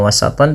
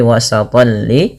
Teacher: tanwin lagi bertemu lam. Nah, ini juga sama dimasukkan kepada huruf lam tanwinnya bukan lagi hanya wasatan tapi wasatolli. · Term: idgham